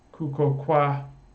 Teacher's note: then we have the Polish style L vocalization, which gives us kuko kwa